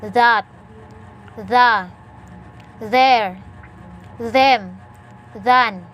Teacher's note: Voiced dental fricative. Initial.